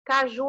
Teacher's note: é chamada de oxítona porque a última sílaba é mais forte